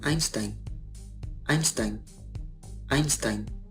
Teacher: Se escribe ei, pero en todos los casos se pronuncia ai, ai, ai, como en Einstein, Einstein, Einstein.